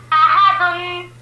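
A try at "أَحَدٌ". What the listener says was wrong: بیٹا غنہ صحیح سے کیا کرو نا. آپ کو شروع دن سے ہی جب سے تختی سٹارٹ کی تب سے ہی بات بتائیے آپ کو، کلیئر غنہ کرو. احدن.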